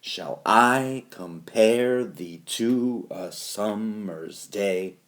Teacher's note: iambic pentameter goes unstressed stressed unstressed stressed